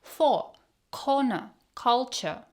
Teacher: British native speakers do not pronounce the R sound at the end like for corner culture cuisine.